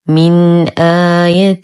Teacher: لدينا نون ساكنة وبعدها الهمز في كلمتين، الحكم إظهار حقيقي مع غنة ناقصة، نظهر النون ونظهر الهمز، فنقول من آية حرف مد وقبله همز مفتوح فهو مد بدل، كل همز ممدود يمد بمقدار حركتين للإمام حفص.